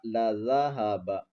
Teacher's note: زال کو نرمی سے ادا کریں گے، سیٹی کی آواز نہیں آئے گی